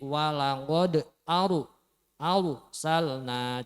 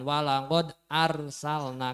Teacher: Nggih Niki walaupun belum diajarkan tentang ro tafhim dan ro t kalau ro sukun didahului fathah ini dibaca agak memoncongkan bibir ng arane Ro tafhim ngih Jadi walaqod Aru aralna jangan walaqod